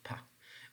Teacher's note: when you're pronouncing the sound P you feel less vibration in your vocal fold or basically means in your throat so it means that there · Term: voiceless